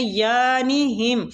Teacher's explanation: فی طغیانہم، غین پہ قلقلہ نہیں کرنا، تو آ کو پر پڑھنا ہے، یا کو کھینچنا ہے